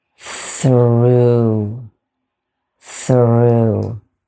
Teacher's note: We have the unvoiced TH, the long O sound as in moon